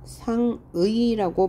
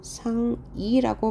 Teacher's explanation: 두 번째 음절의 의는 의라고 읽어도 되지만 이라고 읽는 것도 허용한다. 그래서 상의한다 할 때 이 상의는 상의라고 발음해도 되고요.